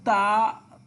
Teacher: সামনের দুই দাঁতের মাড়ির সাথে লাগিয়ে তা উচ্চারিত হবে